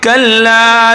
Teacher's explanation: कल्ला सख्ती से पढ़ा जाएगा और 1 अलिफ के बराबर हम इसको खींच कर पढ़ेंगे।